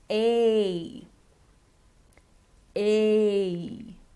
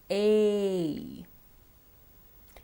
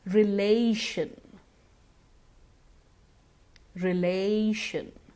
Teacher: The A sound is a diphthong. We have to glide from one sound to the other. And if we feel a little confused with the idea of a diphthong, just keep in mind that you have to stretch the sound.